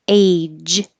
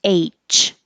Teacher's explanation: the J and the CH are made exactly the same your tongue is stopping the airflow and releasing it and J has sound CH does not · very similar if you don't make the final sound more different age has a j which is voiced and the letter H if you were spelling like my name c h has a voiceless CH so the J and the CH are made exactly the same